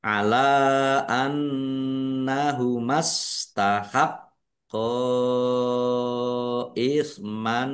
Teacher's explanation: Lam fathah berdiri mad thobi'i. Tetapi karena bertemu dengan huruf alif di kata yang berbeda maka menjadi mad jaiz munfasil. Dibaca panjang boleh lima, boleh dua harakat. Nun tasdid bacaan ghunah atau dibaca mendengung.